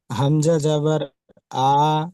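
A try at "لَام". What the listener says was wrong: হামজা নয়, লাম আলিফ জাবার, লাম আলিফ জাবার লা, লাম আলিফ জাবার লা,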